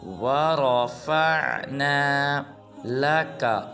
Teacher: نہ واو کو لمبا کرنا ہے نہ را کو، بلکہ را کو پر ادا کرنا ہے